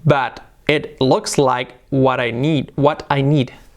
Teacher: the t they soften it and so they make an r